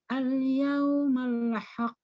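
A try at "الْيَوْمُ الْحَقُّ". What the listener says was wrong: Mimnya pakai harokat dhammah. Mimnya harokatnya dhammah. Malah yang keliru bukan di qafnya ya, malah salah bacaan harokat saja.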